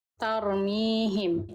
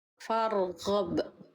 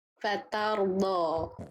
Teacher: ro sukun jangan sampai dibaca tipis ketika diawali oleh huruf berharokat fathah